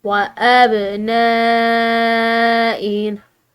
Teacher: یہاں پر با جو ہے یہ حروف قلقلہ میں سے آ رہا ہے، تو اس کو ہم نے ہلا کر ادا کیا، اور نون کے بعد الف کے اوپر بڑی مد ہے، تو بڑی مد کو کھینچ کر ادا کرنا ہوتا ہے، اور اس کو کھنچاؤ کا جو ٹائم پیریڈ ہے وہ 3 الف کی مقدار ہوتا ہے، ٹھیک ہے۔